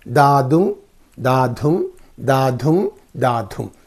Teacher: da dhum, one unstressed syllable, the other one is the stressed syllable. So, when these two syllables come together, that forms an iambic foot.